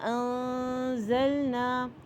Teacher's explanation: انزلنا میں نون ساکن کے بعد اگر زا ہے تو یہاں پہ اخفاء حقیقی ہو رہا ہے